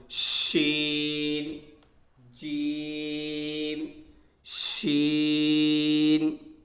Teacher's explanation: اور دوستو شین کا جو مخرج ہے، شین اور جیم، یعنی جس جگہ سے جیم نکلا تھا وہیں سے شین نکلے گا، زبان کا بیچ اور اس کے مقابل اوپر کا تالو